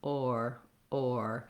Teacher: i'm moving from around an o to my er or or there's not a lot of movement and change in